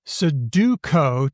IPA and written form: səduko (Suduko)